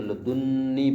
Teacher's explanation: لدن ایک ہے، لدن حرف لدن اگر یا متکلم کی طرف مضاف ہو تو یہاں بھی غالباً نون وقایا لگائی جاتی ہے، لدنی تشدید سے پڑھتے ہیں، یعنی پہلے ایک نون پڑھی ہے اس کے بعد نون وقایا بھی لگی ہے، تو آپس میں دو نونیں مدغم ہو گئی ہیں، تو لدنی پڑھ رہے ہیں، نون پر تشدید ہے، یہ لادونی نہیں، لدنی۔